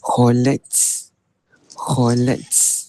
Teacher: Kalau ta ni kalau kita wakaf dia tak boleh baca kholat. Dia kena baca dengan nipis sekali.